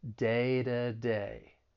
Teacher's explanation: when it comes between two vowels I'm going to pronounce it as a flat T so it's going to sound more like a soft D